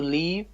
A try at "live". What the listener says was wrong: Not leave. Live, not leave. Yes, leave is L-E-A-V-E.